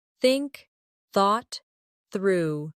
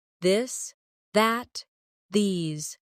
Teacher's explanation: Put your tongue between your teeth and push air out for think. For this, your tongue touches the same position but with your voice turned on. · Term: th sound